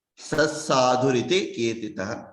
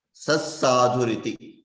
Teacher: That visarga becomes lopa when you do a sandhi.